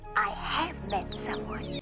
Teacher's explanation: that way of elongating her vowels as most Americans tend to do